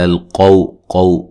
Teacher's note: قاف کو موٹا اور یہ واو لین ہے